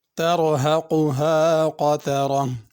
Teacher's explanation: تر میں را کو پر پڑھنا ہے، قطرہ میں بھی را کو پر پڑھنا ہے، قاف بھی پر پڑھا جائے گا۔